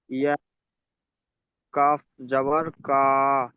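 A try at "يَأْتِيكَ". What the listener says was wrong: না, কায় টান হবে না, এটা তো জাবারের পড়া না, হারাকাতের পড়া। ইয়াতিকা। ইয়া বলে আপনার ঝাটকা হচ্ছে না, ওখানে সবসময় ঝাটকা দিতে হবে যে কোনো অবস্থায়। যদি হামজার উপরে সাকিন আসে তাকে ঝাটকা দিতে হবে, তাহলে বলুন ইয়াতিকা। সাকিনওয়ালা হামজাকে ঝাটকা দিয়ে পড়তে হয়।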